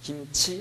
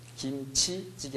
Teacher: 김치 할 때는 치를 정확히 발음하는데 뒤에 다른 말이 오면 김치찌개 할 때 치의 파열 정도가 약화됩니다.